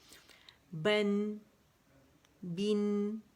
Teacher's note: ایک گونج سی جو جسے نیزلائزیشن کہتے ہیں، گونج آپ کو سنائی دیتی ہے نا ناک کے اندر، باقاعدہ آواز لگتی ہے جیسے گونج رہی ہو.